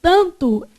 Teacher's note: esse a é pronunciado com som nasal